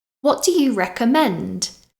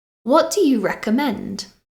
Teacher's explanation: right intonation when you ask this question what do you recommend do you hear my voice go up at the end